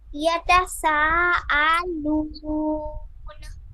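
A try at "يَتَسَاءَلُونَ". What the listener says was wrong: হ্যাঁ এবার শোনা গেছে।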